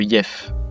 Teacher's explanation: Ça c'est une règle plus difficile à retenir que les autres qui est que les consonnes en fin de mot et uniquement en fin de mots sont souvent dévoisées. C'est-à-dire que les cordes vocales quand vous prononcez le son ne vibrent pas.